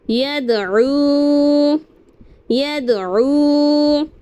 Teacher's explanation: واو ساکن سے پہلے پیش ہو تو واو مدہ ہوگا. ہمیں ایک الف کے برابر کھینچ کر پڑھنا ہے